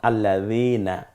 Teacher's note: দাল নরম আওয়াজে, যেমন আল্লাযীনা। তো দালটা বলতে হলে জিহ্বার আগা এবং সামনের দাঁতের আগার সাথে মিলিয়ে উচ্চারণ করলে এটা নরম হয়ে যাবে